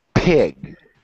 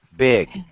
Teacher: The paper should move on the P sound very strongly, but the paper should hardly move when you make the B sound.